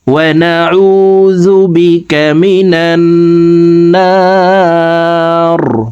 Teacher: রকে ওয়াকফের ক্ষেত্রে সাকিন করে ফেলবো, তখন এই না এখানে 3 আলিফ টেনে রকে সাকিন করব।